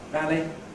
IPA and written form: ˈvæli (valley)